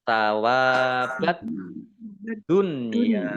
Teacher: Dal tasdid juga bukan jangan diqolqolahkan ya tidak jangan dipantulkan tapi dibaca dobel